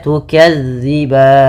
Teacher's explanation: Kemudian pada lafal tukadziban, lafal zal, hati-hati teman-teman di lafal melafalkan zalnya, jangan diganti dengan huruf zai